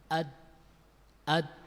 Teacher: Ketika suara keluar dari pita suara melewati rongga tenggorokan dan rongga mulut, tertahan oleh ujung lidah yang menempel pada pertemuan antara gigi atas dan gusi. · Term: huruf dal